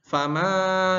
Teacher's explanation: ma harus panjang tiga ayunan karena di situ ada coret panjang ya.